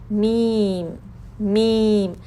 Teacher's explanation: ہونٹ، اوپر والے ہونٹ اور نیچے والے ہونٹ آپس میں ملائیں، اس کو سختی سے بند نہیں کرنا۔ یہ دیکھیں میم میں غنہ بھی، غنہ کا ساؤنڈ سنائی دے رہا ہے جب ہم اپنے ہونٹ بند کر رہے ہیں، اوپر والے نیچے والے، میم، میم۔